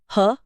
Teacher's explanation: ह की ध्वनि सीधे कंठ के भीतर से काकल्य से आती है, इसलिए इसे काकल्य व्यंजन कहते हैं।